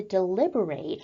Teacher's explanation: we're looking at the verb form of the word deliberate where we put the emphasis on the final syllable of the word